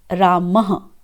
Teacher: यदि वो अवर्ण से परे नहीं होगा, किसी अन्य स्वर से, किसी अन्य अच से परे होगा, उस पर आश्रित होगा, तो उसका उच्चारण स्थल उस अच के अनुसार ही होगा। जैसे रामः, अ के ऊपर विसर्ग है तो इसका उच्चारण स्थल हम कंठ ही मानेंगे